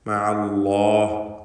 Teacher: അല്ലാഹ് എന്ന ഇസ്മുൽ ജലാലെ തഫ്ഖീം ചെയ്തുകൊണ്ട് അതിൻ്റെ ലാമ് ഉച്ചരിക്കണം